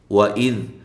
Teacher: واو کو ہونٹوں کو گول کرتے ہوئے لمبا نہیں کرنا ، اذ ذال کو نرم ادا کرنا ہے، اس کے مخرج